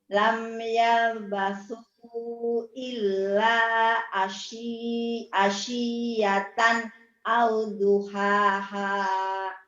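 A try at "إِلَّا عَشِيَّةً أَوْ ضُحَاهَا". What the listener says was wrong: H kecil, ini yang gede, terbalik Umi. Hanya yang kecilnya. Nah, H kecil dulu baru gede nih ya, dengerin. Lam yalbasu illa asyiyatan au duha.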